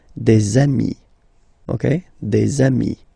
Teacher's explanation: if you make the liaison, so the link between the two, you will get des amis